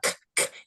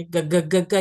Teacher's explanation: If you do a g sound, your vocal cords vibrate and you can feel it. So if you everybody put your hands there, g g g g, you're going to feel it in your voice, in your throat.